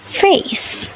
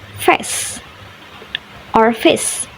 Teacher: This errors is occur because of flattening the diphthong into a monophthong to make it simpler to pronounced